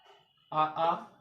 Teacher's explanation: आ कंठवर्ण उच्चारण स्थान कंठ है